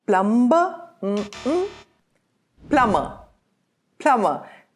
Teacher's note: Notice that the B is silent in this word.